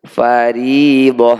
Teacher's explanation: Jika dibaca sebagai bunyi hentian seperti ini, huruf ta marbutah pasti terdengar seperti ha sukun · Tak marbutoh jika dibaca waqaf atau berhenti di akhir bacaan seperti ini harus berbunyi hak sukun